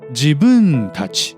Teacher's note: The suffix たち is pronounced low.